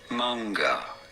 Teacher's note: You do want to stress on the first syllable, the man syllable.